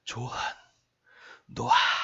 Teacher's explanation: 히읗이 발음하기가 좀 어려워요. 목에다 좀 힘을 줘야 되기 때문에 그래서 이 발음을 편안하기 위해서 이제 탈락하는 거다